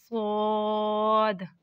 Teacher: सद जुबान की नोक और दोनों दांतों के अंदरूनी किनारे से लगे तो सद अदा होता है